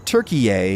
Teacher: with the emphasis on the last syllable